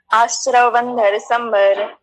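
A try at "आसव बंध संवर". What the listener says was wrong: यहाँ आश्रव कहाँ लिखा? इस गाथा में तो लिखा है आसव। हाँ, आसव बंधन, ये संस्कृत और हिंदी नहीं है, ये प्राकृत है। हाँ, ये ध्यान रखना, आसव बंधन संबर, ठीक है।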